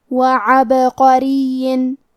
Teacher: آخری میں را کے نیچے تنوین زیر ہے، پھر حرف الواو ہے کلمت وعبقرین، واو حروف الادغام بغنہ میں سے ہے تو ہم یہ حکم کو غنہ اور تشدید کے ساتھ ادا کریں گے، خضر وعبقرین۔ کلمت عبقرین میں با پہ جزم ہے لہذا ہمیں با کو ہلاتے ہوئے یہ کلمہ کو پڑھنا ہے، وعبقرین۔ حرف القاف کو موٹی آواز میں پڑھیں گے کیونکہ را کے نیچے زیر ہے تو یہاں را کا حکم ہے ترقیق، یہاں ہمیں حرف را کو پتلی آواز میں پڑھنا ہے۔